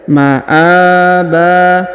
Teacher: Huruf A dipanjangkan 2 harokat karena di atasnya terdapat alif kecil ya